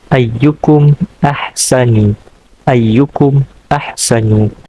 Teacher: Izhar syafawi akan berlaku hukumnya apabila mim sakinah bertemu dengan huruf yang selain daripada mim dan huruf ba. Izhar syafawi hukumnya dibaca jelas pada mim sakinah